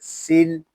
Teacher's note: سین میں سیٹی کی آواز آئے گی اور سین کو لام کے ساتھ ملا کر پڑھیں گے.